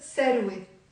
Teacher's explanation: Sarwe starts with the letter F, but in the Lebanese accent, we will pronounce it S